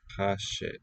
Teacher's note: So slight velar friction on Ha